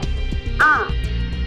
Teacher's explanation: the tongue between the center and the back is in the fully open position. Lips are naturally open. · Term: open vowel